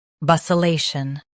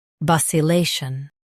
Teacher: US says lay. UK says li. Stress lay in both.